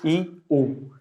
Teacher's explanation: ई आगे से बोल रहे हैं, हम जीभ में आगे फोकस दे रहे हैं, फिर ऊ पीछे से बोल रहे हैं।